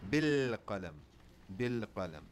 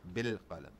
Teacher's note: So I will not pronounce any vowel after the lam. It goes straight into the next letter. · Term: sukun